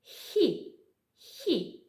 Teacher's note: дзеркальця артикуляція м'якого звука хі відрізняється від твердого тільки тим що при вимові м'якого звука хі язичок за нижніми зубами · приголосні звуки ми позначаємо однією рисочкою звук хи це глухий звук звук хи може бути не тільки твердим може бути і м'яким